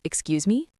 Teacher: You should have said, Excuse me, with a rising tone.